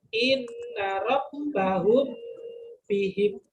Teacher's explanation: melafalkan bacaan dengan samar di antara dua bibir dengan mendengung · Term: ikhfa syafawi